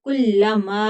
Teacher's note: मद्दे मुनफसिल है, तीन अलिफ तक खींच कर पढ़ेंगे क्योंकि हमजा दूसरे कलमा में आ गया है